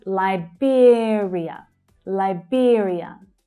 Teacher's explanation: So the second syllable is stressed and it has the /ɪə/ as in 'here' vowel sound.